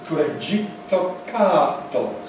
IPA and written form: kɯɾeʤitto kaado (クレジットカード)